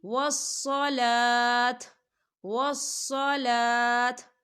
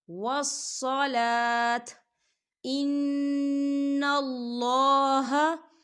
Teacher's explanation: سین کی آواز نہیں نکالنی، آپ نے صاد کی آواز نکالنی ہے